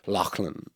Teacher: has that kind of guttural back sound that Irish would have in words like Lachlan